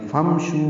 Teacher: فمشو میں فا اور امشو ملا دیں گے. فمشو میم ساکن پہ اظہار، شو واو مدہ اور 2 حرکات لمبا